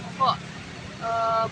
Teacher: Bunyi keluar dari bagian paling bawah tenggorokan. Ada gesekan udara, dia itu tidak bersuara dan tipis.